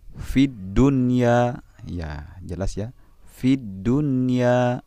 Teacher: cara membacaannya pun itu tidak dengung, melainkan seperti suara izhar, yakni dibaca jelas. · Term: izhar wajib